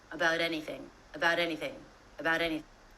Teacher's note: Even though it's two separate words, the T still comes between two vowel sounds, which means it's a great opportunity to link the two words together with a flap T, which sounds like the American D